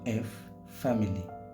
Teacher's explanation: উপরের দাঁত নিচের ঠোঁটে স্পর্শ করবে